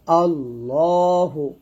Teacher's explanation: আল্লাহ শব্দের লাম মোটা করিয়া পড়িতে হয়।